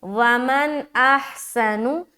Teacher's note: اظہار کے معنی ہے ظاہر کرنا، ہم نون کی آواز کو ظاہر کرتے ہوئے پڑھیں گے، جسے کہتے ہیں اظہار کا قاعدہ۔